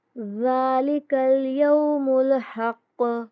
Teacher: قاف پر قلقلہ کریں گے